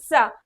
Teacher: जब सड़क वाली सा का आप प्रयोग करेंगे बोलने में, तो आपके दांत के पास से होके आपकी जुबान गुजरेगी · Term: दंत सा